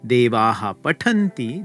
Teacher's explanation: it's going to stay the same since the pakara is a unvoiced labial consonant